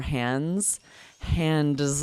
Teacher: It's so hard to say that D really, we just say hands. We drop the D.